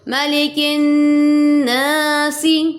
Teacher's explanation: کاف کو باریک پڑھیں گے، قاف نہیں ہے یہ، اور باریک والا کاف ہے